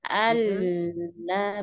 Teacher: suara lamnya tuh mengalir ke samping. Allah betul-betul mengalir ke samping.